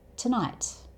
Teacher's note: 'Tuhnight' And the last T in 'tonight' isn't really said here So, like with the word 'out' that we talked about earlier, it's like you're about to say it, but then you stop yourself just before you're about to make the 't' sound.